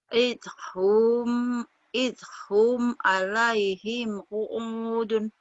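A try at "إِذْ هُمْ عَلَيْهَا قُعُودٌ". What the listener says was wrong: Alaiha. Bukan alaihim ya. Idhum. Alaiha qu'udun.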